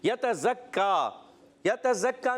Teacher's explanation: کاف پر تشدید ہے، ذرا رک کر ادا کریں گے